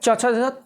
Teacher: च छ तालू से बोलेगा